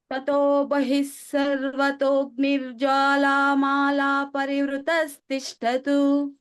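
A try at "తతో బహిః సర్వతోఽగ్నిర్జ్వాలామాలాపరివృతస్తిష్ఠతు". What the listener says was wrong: ఇక్కడ అవగ్రహం దగ్గర బానే ఉంది కొద్దిగా ఇంకా దీర్ఘం చేయొచ్చు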